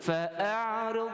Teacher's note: Huruf ain kita lalukan dia, tapi kita sangkut sedikit.